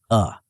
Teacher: the tendency to reduce distinct vowel sounds to the neutral schwa sound uh as in the second syllable of about. While this is natural in unstressed syllables, excessive neutralization can make speech sound mumbled or unclear.